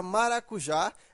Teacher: porque ela é uma oxítona veja que a sílaba tônica é a última Então ela é uma oxítona e ela terminou em A então